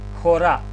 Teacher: бидејќи ова зборче се изговара со здив Х напред, спиритусот е аспер. Гледате, запирка свртена на десно.